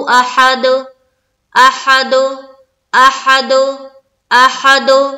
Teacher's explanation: आखिरी हर्फ हुरूफ कलकला में से है और उस पर सुकून आ रहा है, तो वहां पर हमने वक्फ की सूरत में भी करना है कलकला, यानी कि इको साउंड निकालनी है।